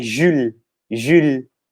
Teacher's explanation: O U tem o som de I com bico, Ju, e o ES é mudo no final, então é Jules, Jules, oui?